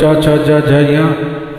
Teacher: इनका उच्चारण करते हैं तो जीव धीरे से ऊपर की तालु को छूती है तब शब्द निकलते हैं